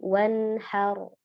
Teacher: Kemudian di sini nun sukun bertemu dengan ha ya, izhar halqi ya, nunnya dibaca jelas ya, keluar dari makhrajnya, tunaikan sifat nunnya. Dia punya gunnah asli yang mana tingkatan durasinya adalah durasi naqisah ya, kurang, maka tetap ada gunnahnya walaupun dia dikatakan izhar halqi ya.